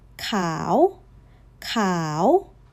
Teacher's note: It rose, so that's khao, white, rising tone.